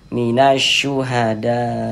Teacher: kita baca minas syuhada minas langsung masuk ke huruf syin ini ya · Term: alif lam syamsiyah